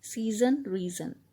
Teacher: Rhymes using words of two syllables in which the heavy stress falls on the first syllable, also called trochaic rhymes. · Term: Double rhymes